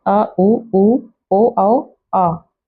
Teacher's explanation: इनको उच्चारित करते समय हमारे जिह्वा के पिछले भाग पर जोर पड़ता है। संवृत स्वर। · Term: पश्च स्वर